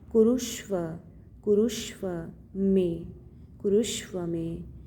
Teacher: कुरुष्व, कुरु क पे ऊ रु, आधा यह आपका अर्ध मूर्धन्य श है, षटकोण वाला श है